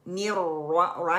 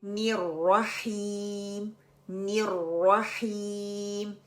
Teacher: the second रा got the फतहा, तो उसको हैवी करके पढ़ेंगे